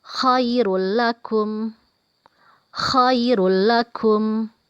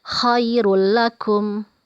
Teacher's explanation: ada tanwin bertemu dengan huruf lam dibaca tidak dengung atau pendek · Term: idgham bilagunnah